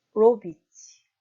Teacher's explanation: 로비치 동사를 발음하면 로의 강세가 있겠죠.